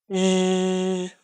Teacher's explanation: The tongue is close to the top of the mouth, but does not press against it.